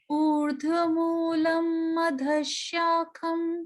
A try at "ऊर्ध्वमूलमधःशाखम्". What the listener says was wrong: नहीं मैम, ऊर्ध्वमूलम हो रहा है आपका, मूलम नहीं है।